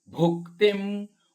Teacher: ಭೂ ಮಹಾಪ್ರಾಣದ್ದು, ಕಿ ಕೆತ್ತ ಇದೆ, ಅನುಸ್ವಾರ ಅರ್ಧ ಮ,